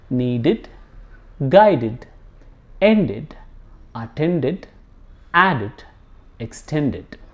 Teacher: if there is d sound before ed, the ed is pronounced as id.